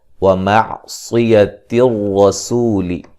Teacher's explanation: صاد کو موٹا ادا کریں گے، را کو موٹا ادا کریں گے، سین کو باریک سیٹی سے